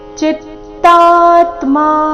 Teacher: ಚಿತ್ತಾತ್ಮಾ ತಾ ದೀರ್ಘ ಬಂದು ಸೌಮ್ಯಾಘಾತ